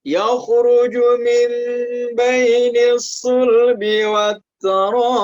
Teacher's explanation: ada hukum bacaan mad wajib muttasil sehingga dia dibaca 5 harokat.